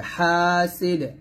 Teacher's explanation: দালটা সাকিন হয়ে যাবে এবং কলকল হবে